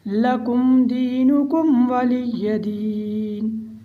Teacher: ہم لکم میں بھی اظہار کریں گے، دینکم اس میں بھی اظہار کریں گے